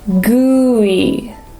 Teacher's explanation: we want to make sure we separate ooh and then e